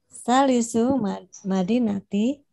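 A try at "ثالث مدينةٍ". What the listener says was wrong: Madinatin. Jangan takut sama tanwin. Salisu Madinatin.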